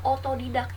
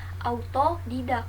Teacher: fonem AU atau diftong AU yang diucapkan menjadi O. Kata ini sering sekali saya dengar, dan sering sekali orang mengatakan bahwasanya kata ini adalah benar, yaitu adalah otodidak, yang seharusnya adalah autodidak.